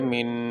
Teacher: نون ساکن پہ غنہ ہوتا ہے، اور غنے کی آواز ناک میں ہوتی ہے، غنہ ناک سے ادا کیا جاتا ہے